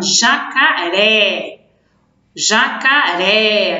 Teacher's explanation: o som mais forte no final, na última sílaba, e a gente percebe até que tem um acento, né, na palavrinha. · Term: oxítono